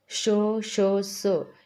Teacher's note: श, श, स यांचा उच्चारही वायूच्या घर्षणाने होतो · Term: घर्षक